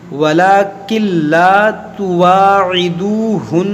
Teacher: یہاں پر ولیکن لا ہے نا، کاف نون لام زیر، لیکن اس نون کو لام میں داخل کر دیں گے